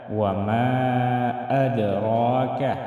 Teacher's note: وما مد کو ہم 3 یا 4 الف کے برابر کھینچ کر پڑھیں گے